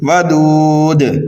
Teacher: ودود یہاں پر بھی وقف کریں گے آپ تو دال کو ساکن کر دیں گے، یہاں پر وقف بالاسکان ہو رہا ہے اور مد عارض کا قاعدہ بھی یہاں پر پایا جا رہا ہے اور قلقلہ کبیرہ بھی ہو رہا ہے